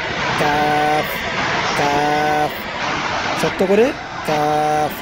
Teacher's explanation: জিহ্বার গোড়া হইতে একটু আগে বাড়াইয়া তার বরাবর উপরে তালুর সঙ্গে লাগাইয়া উচ্চারিত হয় কাফ। কাফ, শক্ত করে কাফ। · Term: পাঁচ নম্বর মাখরাজ